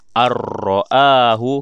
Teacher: Nun mati berjumpa dengan huruf ra. Kita masukkan tetapi tidak dengung.